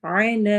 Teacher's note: انک، نون پہ غنہ کرنا ہے، کا لمبا نہیں ہوگا۔ علی، عین حروف حلقی میں سے ہے، حلق کے درمیان سے ادا ہوگا